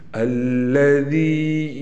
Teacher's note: اس ذال کو ادا کرتے ہوئے ہلکی سی زبان کو ہم ضرور لائیں گے دونوں دانتوں کے درمیان